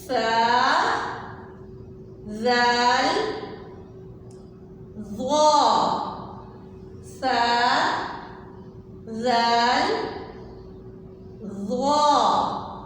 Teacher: آپ جب ان 3 حروف کو ادا کریں گے تو آپ کی زبان سامنے والے دانتوں کو لگنی چاہیے